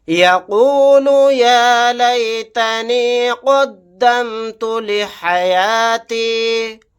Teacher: قاف کو یہاں پر موٹا یعنی پر پڑھیں گے